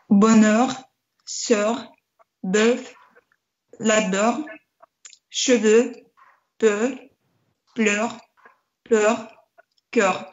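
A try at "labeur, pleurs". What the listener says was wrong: Ага, я хочу вас попросить немножко labeur, pleur протянуть, более открыто сделать. Не любите прям тянуть звуки.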